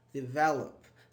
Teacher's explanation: When I say develop, the stress on the V here. It's in the middle.